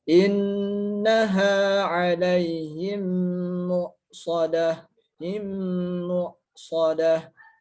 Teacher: Mim pertamanya diidghamkan atau bahkan dimasukkan ke dalam mim yang kedua dengan tempo gunnah atau berdengung yang kemudian dipanjangkan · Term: idgham mimi